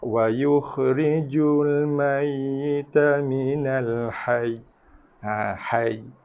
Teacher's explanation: So tekanan pada ya tu dikekalkan. Bacaan tekanan pada ya dikekalkan sama ada ketika wasal sambung ataupun ketika waqaf berhenti.